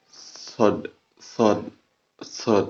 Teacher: hames itu adalah napas tetap mengalir ketika mengucapkan lafaz tersebut